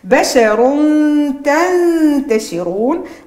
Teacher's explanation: عندي الراء هنا مفخمة لأنها متحركة بالضم. ثم تنوين الضم بعده التاء، عندي الإخفاء مع إبراز الغنة.